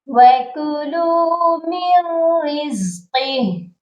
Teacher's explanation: جب ہم نے یہاں وقف کرنا ہے تو ہا کو ساکن کرنا ہے، ہا سائلنٹ ہو جائے گی